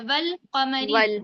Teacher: तो हमने क्या करा लाम को पढ़ा वाव को लाम से मिला दिया व कमरी क्योंकि काफ जो है वो हुरूफ कमरी के 14 हुरूफों में से काफ आ रहा है यहां पर।